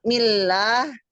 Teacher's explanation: Kalau millah itu kan tipis karena berharakat kasrah